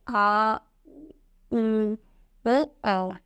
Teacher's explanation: तीसरा है पश्च स्वर। इन स्वरों के उच्चारण में जीभ के पीछे के भाग का प्रयोग होता है